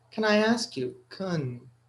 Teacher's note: So can, when it's not stressed, it's pronounced kun.